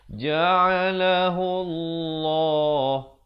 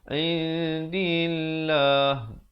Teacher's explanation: Lafzul jalalah di sini dibaca nipis.